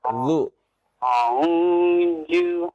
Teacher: Dari ujung lidah ketemu ujung gigi seri atas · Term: zal